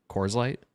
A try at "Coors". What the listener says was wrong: Yeah, I don't think I like that. I think you are saying it as if it's spelled Cores. That's what it sounds like. It's Coors. There's two O's.